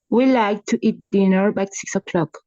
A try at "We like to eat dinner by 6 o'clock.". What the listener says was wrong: Excellent. Much, much better. Great.